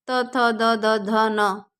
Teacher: रस अब आता है हमारा दंत दंत से किसका उच्चारण होगा दंत से जो त वर्ग है जो दांतों से टच होता है बोलते समय